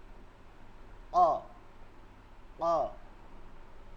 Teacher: হলকের শেষ থেকে ধাক্কা দিয়ে তালুতে এসে লাগবে মাখরাজটা হচ্ছে জিহ্বার গোড়া তালুতে গিয়ে লাগবে